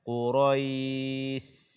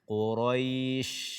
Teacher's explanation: bacalah dengan tafasyi yang angin yang keluar dari mulut kita itu berpencar dia ke atas, ke bawah, ke samping